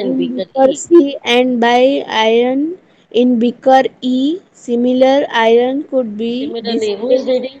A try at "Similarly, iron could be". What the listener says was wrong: Beta, be careful. Instead of similarly, you are reading similar. See, the meaning changes, Beta.